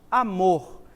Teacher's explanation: môr é a sílaba mais forte